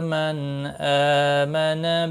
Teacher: نون ساکن کے بعد حروف حلقی میں سے حمزہ آیا ہے، اظہار حلقی ہوگا، غنہ نہیں ہوگا۔